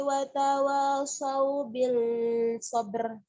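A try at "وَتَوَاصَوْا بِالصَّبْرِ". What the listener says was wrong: Ngabil itu mah alif lam samsiah. Alif lamnya nggak dibaca. Wa tawassaw bis sabr.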